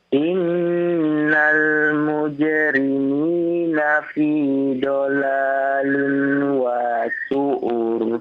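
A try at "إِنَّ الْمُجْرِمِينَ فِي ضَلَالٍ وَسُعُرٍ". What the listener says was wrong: Iya, bagus. Lanjutkan.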